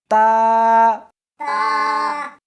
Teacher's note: اس حرف کو زبان کے اوپر کے تالو سے ملا کر پڑھیں گے